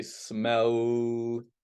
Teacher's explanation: if I say smell, when I'm saying that L sound, there's a vibration in my throat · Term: voiced sounds